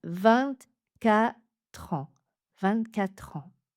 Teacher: Ici, on ne va pas faire une liaison, mais un enchaînement. On va enchaîner le son de consonne tr avec la voyelle suivante.